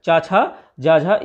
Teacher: तो चा वर्ण का उच्चारण मुख के किस भाग से होता है, तो तालु वाले भाग से होता है, ठीक है। चा, छा, जा, झा, इया जो होते हैं ये तालु वाले भाग से होते हैं